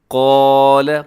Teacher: قاف کو موٹا پڑھنا ہے